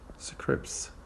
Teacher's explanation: Sometimes we say it scripts without the T. We drop the T just to make the consonant cluster easier to say or pronounce.